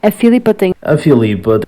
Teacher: dizem Filipa, enquanto que no resto do país temos mais tendência a dizer Filipa, cortando o i átono